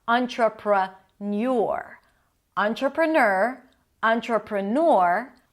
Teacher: the third option is neur with a y sound before the or